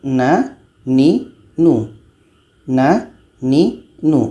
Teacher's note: Na ini letaknya pada ujung lidah dekat makhraj lam menempel ke gusi.